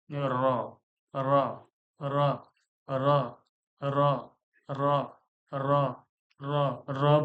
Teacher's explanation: জিহ্বার আগার উল্টাপিঠ তার বরাবর উপরের তালুর সঙ্গে লাগিয়ে উচ্চারণ হয় তার উপর বরাবর উপরের তালু বলতে এই যে উপরে যে তালুটা